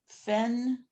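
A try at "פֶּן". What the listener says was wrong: Except there's a dot in there, so it's pen.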